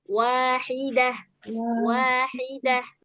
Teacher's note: bunyinya jadi agak disorong sikit ke tengah tenggorokan supaya pas bunyi h-nya